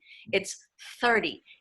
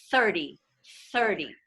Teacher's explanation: That's the vocalized TH. And then there's a non-vocalized TH, which is just sort of a breath, which is the TH in 30